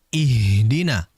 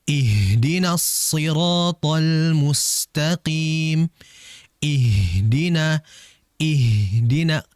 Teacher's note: Huruf H ini sifatnya semuanya lemah, akan tapi dia memiliki sifat yang rikhawa dan hames. Dan menurut saya dengan dua sifat ini membuat dia ee tidak terlalu lemah dan dijelaskan dengan aliran serta ee udara yang keluar pada H.